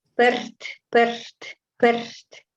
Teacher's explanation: Это буковка R, перт, перт, перт. Дрожащий такой R с придыханием. This letter is has a kind of a trembling R with an aspiration.